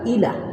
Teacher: আমাদের খেয়াল রাখতে হবে যে এলা, এলা না, এ হবে ইলা